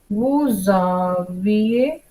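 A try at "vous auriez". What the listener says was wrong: Bravo, good.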